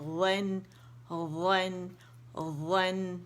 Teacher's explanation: नून बारीक होगा, व मोटा होगा।